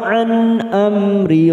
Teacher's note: nun sukun bertemu hamzah, idhar halqi, kita baca jelas tanpa mendengung